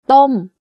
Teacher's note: My pitch goes up and slightly down by the time I finish saying the word. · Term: falling tone